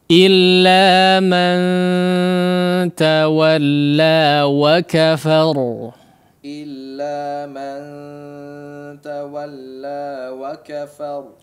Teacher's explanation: huruf ra-nya dibaca tebal ya. Karena kondisinya sukun didahului oleh huruf yang berharakat fathah